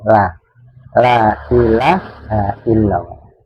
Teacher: cara mengucapkan lafaz lam itu ada di ujung lidah mengenai gusinya gigi taring